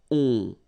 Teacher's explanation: you don't hear any N, so it's really on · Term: nasal